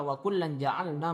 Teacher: tengah lidahnya diangkat sedikit mendekat kepada makhraj huruf jim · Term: ikhfa